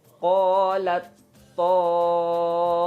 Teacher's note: Ada ta yang sukun bertemu dengan huruf to, dia dibaca idgham mutajanisain. Bacanya dileburkan. Jadi ta itu tidak dibaca qalat to, tapi langsung aja qalat ta'ifah gitu.